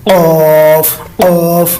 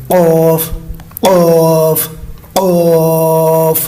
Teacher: قوف جو نقطوں والا ہے یہ موٹے حروف میں شامل ہے. یہ حلق کے اوپر والے حصے سے زبان کی جڑ جو ہے اوپر تالوں کی جو شروع والا حصہ ہے وہاں پہ ادا کریں لگا کے قوف قوف موٹا سا کر گئے قوف قوف قوف.